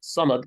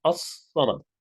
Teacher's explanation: Samad would be the word in itself. But as-Samad, you double the length of the sad. So instead of Samad, it's as-Samad.